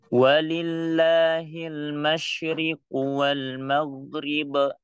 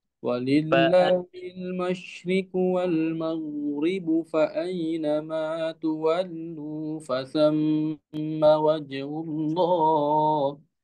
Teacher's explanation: Wal maghrib dijelasin kolkolahnya. Jangan dipelanin.